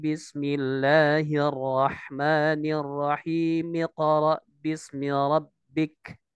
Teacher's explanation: huruf mim dari kata ar-rahimi ya, lalu menghilangkan hamzah wasal dari ayat iqra menjadi miqra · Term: hamzah wasol